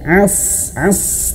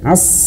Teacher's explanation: As, tebalkan ya. Pangkal lidahnya dinaik. As. Ya, seperti kita dicekek gitu ya, sedikit ya.